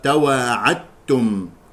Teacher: يخطئ من يقرأ تواعدتم بإظهار الدال والصواب إدغامها في التاء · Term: الإدغام